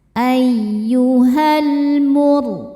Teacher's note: Ro sukun dibaca secara tafkhim karena sebelumnya dommah dibacanya tebal. · Ayyuhalf lamnya namanya alif lam qamariah. Sebab alif lam menghadapi huruf qamariah yaitu mim. Maka lam dibaca jelas.